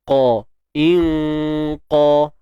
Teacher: kena bagi pangkal lidah terangkat. Itulah yang dinamakan isti'la. Sifat yang ada pada huruf qaf.